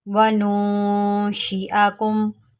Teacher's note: یہ حمزہ ہے، اس کو ہم نے حمزہ پڑھنا ہے، اس کو عین نہیں پڑھیں گے